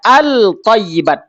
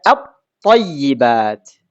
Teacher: Maka ketika lam sukun ketemu dengan th, maka dia terjadi idgham. Lamnya dileburkan ke th sehingga tidak dibaca al thayyibat. Tidak. Tapi dibaca atyibat.